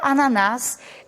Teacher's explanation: a sílaba tônica dela é nas portanto é a última sílaba tônica sendo assim é uma aguda porque ela leva acento porque é